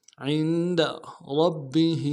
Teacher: عین کو موٹا ادا کریں گے، نون ساکن میں غنہ کریں گے ، دال کو نرم سے ادا کریں گے، عند ربہ، را